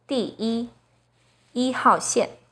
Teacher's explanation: When 一 is used as a number, it's the 1st flat tone, as in 1, 2, 3, 4, 第一, 一号线.